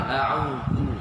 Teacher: Zu mesti dikeluarkan lidah sedikit, menunjukkan perbezaan antara zal dengan zai. Zu mesti keluar sikit.